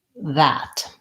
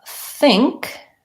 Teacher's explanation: when I say that my voice is on four that th when I say think my voice is not on four that th